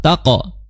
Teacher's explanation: Ahlut taqwa, ya, ha, ya, karakternya lemah jadi biasa aja, jangan ahlut taqwa langsung masuk ke huruf ta karena dihukumi sebagai alif lam syamsiyah. Taqwa, nah di situ qaf qalqalah taqo, ya, disertai dengan suara tebal karena dia isti'la.